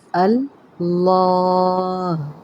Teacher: الف کو نہیں موٹا کر دیتے، اس لام کو پر کرتے ہیں